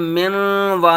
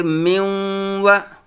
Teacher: نون اور واو کی اکٹھی آواز نکلے، مکس کر کے آواز ہم نے اس کی نکالنی ہے